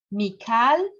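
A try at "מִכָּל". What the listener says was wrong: It's we haven't had this rule yet. It's actually Mikol. This vowel sometimes makes an O sound, but we haven't learned that yet. Mikol.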